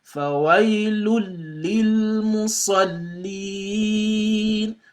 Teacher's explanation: So you avoid the tanween and just give the lam a dhamma. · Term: idgham bighayr ghunna